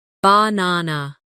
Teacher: in the word banana, the stress is on the second syllable